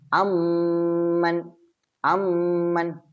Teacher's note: ഇവിടെ വരും അതായത് ഇദ്ഹാം ഷഫി അതായത് ഇദ്ഹാം എന്ന് പറഞ്ഞാൽ ലയിപ്പിക്കണം അപ്പൊ ഒന്നാമത്തെ മീമിനെ രണ്ടാമത്തെ മീമിലേക്ക് ചേർക്കുകയും അതോടൊപ്പം മണിക്കുകയും വേണം അതാണ് അമ്മൻ അമ്മൻ അം മൻ എന്ന സ്ഥലത്ത് അമ്മൻ ഒറ്റ മീം ആക്കി